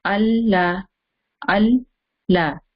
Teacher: When the first time you stop al, that is the makhraj of lam. Your tongue is going up, is touching the roof behind your teeth, top teeth.